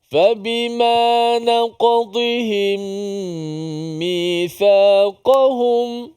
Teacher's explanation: Kaf bukan huruf qalqalah. Tapi bila kita kecilkan qaf itu naqa jadi naka, maka dia menyerupai seperti huruf kaf yang qalqalah